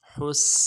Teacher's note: سین کی سیٹی باریک ہوگی، حا کو گہرائی سے ادا کریں گے